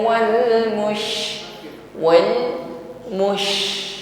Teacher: Mus perhatikan ketika huruf syin yang bersukun ya di sini ada sifat tafasyi yang dimiliki oleh huruf syin yaitu intisyari menyebar angin di dalam mulut kita ya jadi nafas ini meluas di dalam mulut kita tidak sekedar